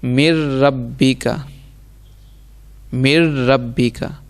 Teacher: ہم نے پڑھا تھا را اور لام میں بغیر گنہ کے ادغام کریں گے۔ اب اس میں آپ نے ناک میں آواز نہیں جانے دینی